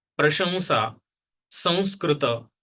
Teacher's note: So it is not N it is not even M but it is because the air is passing through the nose and that is also the nasal sound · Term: anusara